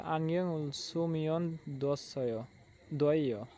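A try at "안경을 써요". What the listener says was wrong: থয় দয় পড়েন না, থয় পড়বেন। যেটা লিসেনিং উচ্চারণ করবে সঠিক সেটাই করবেন, তার লিসেনিং এ খারাপ হবে না।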